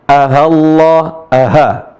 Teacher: Taskhil itu adalah antara hamzah dan ha.